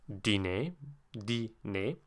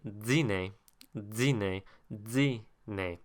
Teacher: In Quebecois French would be dîner, dîner, dîner, where the D sounds like a DZ. That is an affricated dental.